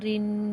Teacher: را کے اوپر تنوین غنہ کریں گے